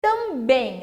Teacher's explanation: termina com EM e a sílaba tônica é o bem, eu vou falar com um timbre fechado